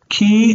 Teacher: Ki is its own word, so it's like an accented syllable, and it's long. Tov is its own word, therefore it's accented, and it's long.